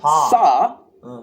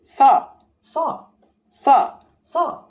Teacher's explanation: Notice it's not quite as strong as an s in English.